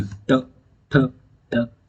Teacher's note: पहले जीभ अंदर को रोल करेगी फिर बाहर आएगी, तो बाहर पहले जीभ इस तरीके से रोल करेगी, फिर जब बाहर आएगी तो इससे टकराएगी, ऐसे इससे टकरा के आएगी। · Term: मूर्धन्य व्यंजन